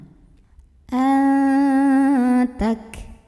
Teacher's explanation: Semakin kita tekan ke makhrajnya ya. Semakin kita tekan kaf ini ke pangkal lidah ya, makin gak ada bunyinya. Tapi di akhir ada hamsnya, ada anginnya.